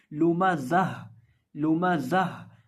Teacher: जब हम जा को पढ़ते हैं तो हम जा के अंदर सीटी की आवाज़ पैदा करके पढ़ते हैं